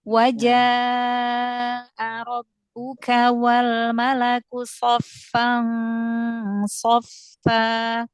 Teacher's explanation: mat wajibnya panjangkan lagi 4 atau 5 harokat.